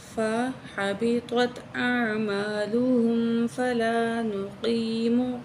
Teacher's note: काफ को यहाँ मोटा करके पढ़ेंगे, लहुम यौमल क़ियामति वज़ना, काफ को मोटा करके या के ऊपर जो है खड़ी ज़बर है खींच के पढ़ेंगे, यौमल क़ियामति वज़ना।